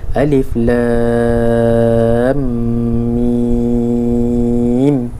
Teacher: Lam 6 harakat. Tambah harakat 2 dengung ni. Lepas tu masuk mim 2 harakat.